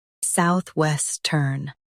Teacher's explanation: Stress west and keep turn light.